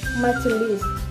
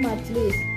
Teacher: Sinkop adalah proses penghilangan atau penanggalan satu atau lebih fonem pada tengah kata. Majelis kehilangan fonem e sehingga menjadi majlis. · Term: zeroisasi jenis sinkop